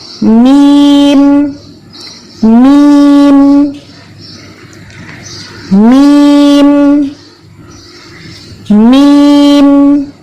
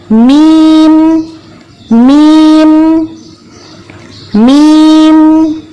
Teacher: حرف میم کی آواز ناک سے بھی باہر آتی ہے، یعنی کہ دونوں ہونٹوں کے ملنے سے حرف میم کی آواز بنتی ہے اور ہونٹوں کے ساتھ ساتھ ناک سے بھی میم کی آواز کا تعلق ہے. دونوں ہونٹ باہم مل جاتے ہیں اور آواز ناک کے ذریعے باہر آ جاتی ہے · تو میم کے اندر ایک لازمی کیا خوبی ہے کہ اس کے اندر غنہ کی آواز موجود ہوگی. تو یہاں پہ جب ہم کہتے ہیں میم تو آپ محسوس کریں گی کہ آپ کی کچھ آواز ناک سے بھی باہر آئی ہے. اس کے لیے ہمیں کوئی ناک پر زور نہیں دینا پڑا.